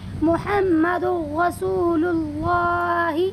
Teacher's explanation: دو پیش کی تنوین کو یعنی جو اس کی آواز ہے وہ نون والی، اس کو را میں بدل دیں گے محمد، اور بالکل بھی غنہ نہیں کریں گے، بالکل بغیر کسی غننے کے پڑھیں گے محمد رسول اللہ۔ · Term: ادغام تام